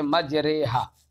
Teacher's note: الف کو یا کی طرف مائل کر دیتے ہیں تو الف جو ہے نہ تو اپنے مخرج اصلی میں رہتا ہے اور نہ یا کے مخرج میں جاتا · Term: الف ممالہ